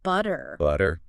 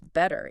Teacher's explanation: This is where a T sound magically turns into a soft, fast D sound. A T becomes a D. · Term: flapped T